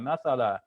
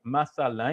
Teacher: I'm pausing so I'm making that a sound long